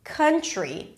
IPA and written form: ˈkʌntri (country)